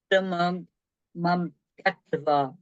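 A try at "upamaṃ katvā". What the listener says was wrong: No, I can see you're still doing an M. Upamankatwa.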